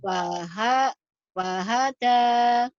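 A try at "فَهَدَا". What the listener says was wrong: Bukan wahada. Tapi itu fa. F. Fahada gitu Bu. Tekannya.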